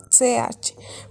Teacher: la aparición de la fricativa postalveolar sorda, es decir, la consonante ch en castellano